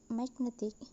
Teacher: So the word magnetic, the stress moved from the first syllable to the second syllable